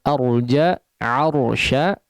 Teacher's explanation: huruf ra-nya ditebalkan tapi hamzahnya jangan ikut cenderung tebal ya, jangan terpengaruh menjadi agak tebal.